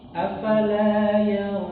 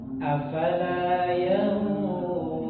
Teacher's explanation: Ikhfa pada ayat yang ke-17 itu dibaca dengan yang tebal.